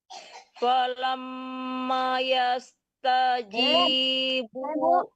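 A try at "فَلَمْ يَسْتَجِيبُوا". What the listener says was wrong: Falam mana namanya dikasih lagi harakatnya kan udah ada harakat mati di situ. Bunya panjangin kan Ibu.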